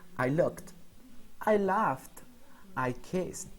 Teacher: when we pronounce the T at the end the T doesn't vibrate